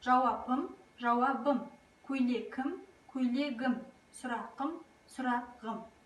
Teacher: Сонымен қатар П, К, Қ дыбыстарынан аяқталып, оған дауысты дыбыстың қосымшалары жалғанса, олар ұяңданады. Сәйкесінше П, Б-ға, К, Г-ға, Қ, Ғ дыбыстарына өзгертіледі.